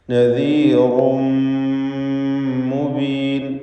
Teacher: റായിൻ്റെ തൻവീനിന് ശേഷമുള്ള മീമിൽ പൂർണ്ണമായും ലയിപ്പിച്ച് മണിച്ചുകൊണ്ട് ഇദ്ഗാം ബിഗുന്ന കാമിൽ നൽകി ഉച്ചരിക്കേണ്ടതാണ്